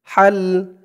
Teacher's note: হার উচ্চারণটা গলার ভিতর থেকে চিকুন হয়ে বের হবে না এক আলিফ টান খাড়া জবর তা দিয়ে লাম ধরবে [মিউজিক]